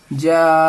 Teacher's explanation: तो इस मद को नाज़रीन 4 अलिफ के बराबर खींच करके पढ़ना है। जैसे जा यानी 3-4 सेकंड तक आप इसको खींचेंगे जा। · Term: मद्दे मुत्तसिल